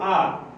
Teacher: इसके उच्चारण में क्या रहेगा, मुंह आपका पूरा खुला रहेगा। मुख जो है आपका मुख पूरा खुला रहेगा।